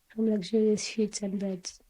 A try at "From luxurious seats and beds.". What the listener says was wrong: You said sheets. Let's try again. Seats and beds.